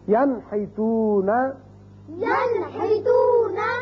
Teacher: نون ساکن کے بعد ہا آ گیا تو اس کو ہم ظاہر کر کے پڑھیں گے نون کے مخرج کو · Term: اظہار